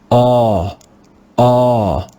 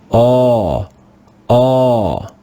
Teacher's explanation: This is called a rounded A because our lips are rounded when we make this sound. Round your lips and say aw, aw.